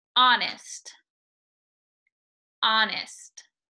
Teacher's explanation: You should not feel any air coming out of your mouth. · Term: glottal stop